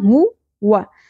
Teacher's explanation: ہا اقصی حلق سے پیش اور واؤ کو زیادہ نہیں کھینچنا